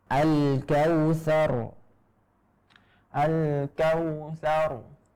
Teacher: tetap ada getaran, akan tetapi getarannya itu tidak nampak dengan jelas. Jadi samar-samar dan sedikit. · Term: ra yang sukun